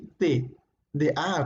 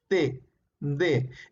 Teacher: Cuando digo D, utilizo mi lengua y se ubica entre los dientes.